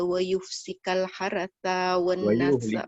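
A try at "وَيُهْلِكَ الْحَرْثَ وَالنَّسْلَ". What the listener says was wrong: Wayuhlika, bukan wayufsika. Wayuhlikal haratha.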